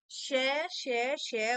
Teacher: है तीसरा है उष्म व्यंजन उष्म का अर्थ होता है गर्म इन व्यंजनों के उच्चारण के समय वायु मुख से रगड़ खाकर ऊष्म पैदा करती है